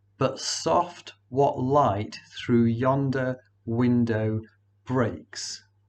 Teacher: the emphasis is always put on the second in each pair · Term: iambic pentameter